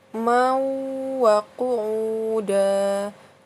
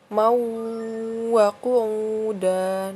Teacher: hukum bacaan idgham bi gunnah ya. Jadi berdengung ya.